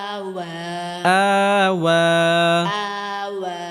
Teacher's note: آمن হামজা খারাজ জবর আ ওয়াও খারাজ জবর ওয়া আওয়া آوى আওয়া। آوى এখানে হামজার উপর মদের হরফ আসার কারণে একালি পরিমাণ লম্বা করে টেনে পড়তে হবে